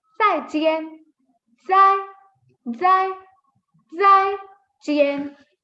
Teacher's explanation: Again, 4 tone, so your pitch just falls.